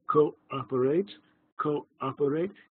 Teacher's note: with the glottal stop between the two O's there's a moment of silence cooperate cooperate it's that moment of silence which is the hour